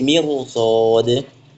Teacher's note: seperti mirsad itu memang tetap tebal karena harokatnya fathah huruf isti'lahnya.